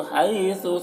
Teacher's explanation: حیثو، یہاں پر یا لین ہے، اسے جلد پڑھنا ہے